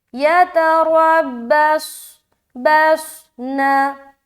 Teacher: बस सीटी भी जाहिर और मोटापन भी जाहिर, लेकिन मोटापन ज़्यादा समझ आना चाहिए